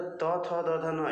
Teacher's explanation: और दंत कह रहे हैं तो त, थ, द, ध, न यानी त वर्ग के जितने भी वर्ण होते हैं वो दंत उच्चारण स्थान से उच्चारित होते हैं